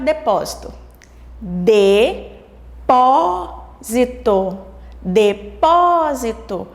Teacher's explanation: nós descobrimos que o pó é a sílaba tônica da palavra depósito · O pó fica sendo a sílaba mais forte devido ao acento agudo.